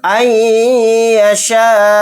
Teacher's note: یا پر تھوڑی دیر آواز کو روکتے ہوئے غنہ کریں گے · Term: ادغام مع غنہ